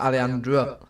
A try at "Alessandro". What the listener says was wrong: Alessandro. Alessandro. Well, just Alessandro. Just pronounce every letter that you're seeing there, and don't try and turn the two S's into a H because you think it's got an accent.